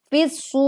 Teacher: Ro sukun karena waqaf didahului huruf wawu maka dibaca tebal. Ataupun juga karena ini didahului wawu sukun lalu sebelumnya ada huruf berharokat dhammah maka ro dibaca tebal. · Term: ro tafkhim